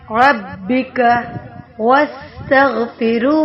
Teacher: سین پہ سٹی کی آواز، تغ، غین موٹا پڑا جائے گا، پھر ہو، را سے پہلے زیر ہے تو باریک پڑھیں گے۔